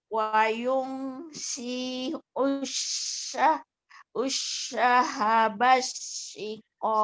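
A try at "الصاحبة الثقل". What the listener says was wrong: Sahanya panjang Bu. Sahabat sikol. Sahabat. T-nya pendek. Wa yushi'us sahabat sikol.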